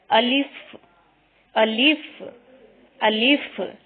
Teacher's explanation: الف کی ادائیگی میں الف کو بغیر کھینچے لام کو فا کے ساتھ فوراً ملانا ہے